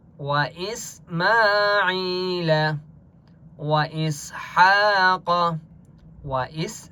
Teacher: وَإِس سین کے اوپر سکون ہے، حمزہ کو سین کے ساتھ ملائیں گے. ہا کے اوپر کھڑا زبر ہے، 1 الف کی مقدار کھینچ کر پڑھیں گے، اور قاف مستعلیہ میں سے یا قاف کو موٹا پڑھیں گے.